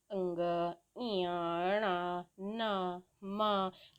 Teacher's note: अनुनासिक क्यों कहलाते हैं? क्योंकि ये नाक से बोले जाते हैं। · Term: अनुनासिक वर्ण